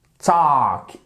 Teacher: Le L ici, vous ne l'entendez pas lorsque vous le prononcez, ce verbe.